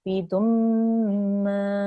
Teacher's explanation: It's meme mushaddad, means the meme gunna. You have to make a gunna sound. You have to hold on that, make a nasal sound, and you have to elongate that with the alif madda afterwards.